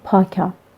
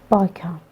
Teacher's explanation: We consider them as obstruent. P is voiceless consonant, but B is voiced consonant. When they becomes instead of each other, they make two different words, which we consider them as a minimal pairs.